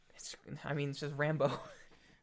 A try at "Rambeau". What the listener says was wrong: There's a bow in there. The bow. You're saying Rambo. Oh, theirs is EAU. Like bow.